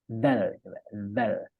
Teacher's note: Dal sama-sama di lisan atau di lidah cuma kalau dalal itu ujung lidah menepati ujung dua gigi seri ee yang atas